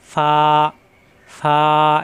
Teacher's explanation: উপরের দাঁতের আগা নিচের ঠোঁটের পেটে লাগিয়ে ছেড়ে দিলে হয়ে যায়। ফা, ফা এখানে কিন্তু টান দেওয়া যাচ্ছে, ফা হরকত আসলে আর টান দেওয়া যাবে না।